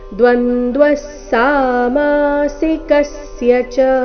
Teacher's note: ವಿಸರ್ಗದ ಉಚ್ಚಾರಣೆ ಸ ರೀತಿ